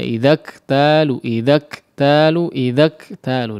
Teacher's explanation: Kemudian ya huruf kaf juga yang bertanda sukun ya, idzaktalu idzaktalu idzaktalu. Di situ disempurnakan dari segi sifat hams dan syiddahnya. Yang paling penting di syiddahnya ya.